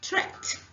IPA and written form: trekt (trekked)